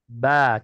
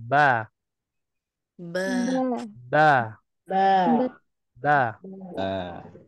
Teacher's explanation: Ini masih masuk dalam makhraj asyafatan ya masih dalam makhraj asyafatan Bagaimana caranya dengan mengetupkan dua bibir ya ya antara bibir atas dan bibir bawah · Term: huruf ba